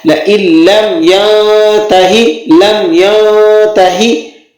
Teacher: لَإِلَّمْ یہاں پر غنہ نہیں ہوگا، ٹھیک ہے، غنہ کے بغیر اس کو آپ نے پڑھنا ہے